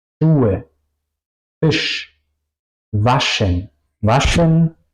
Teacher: La SCH se pronuncia siempre juntos en alemán y se pronuncia como sh. Si quiero callar a una persona, sh, así se pronuncia.